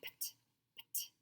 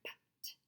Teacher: It's PT, pt, pt. Both those puffs of air, pt, puff right out, and you can say them quicker.